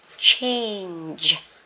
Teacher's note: hơi chu mỏ, giật đầu giật cuối luôn, nhưng mà âm cuối thì rung cổ họng nhá